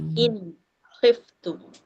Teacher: izhar hal nyatalah nun mati tu nyata bunyi dia >> in khiftum >> kalau kesalahan kesalahan yang biasa dekat tum wain khiftum. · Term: izhar halqi